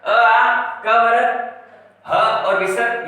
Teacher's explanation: अ, आ, क वर्ग, ह और विसर्ग ये कंठ से बोले जाते हैं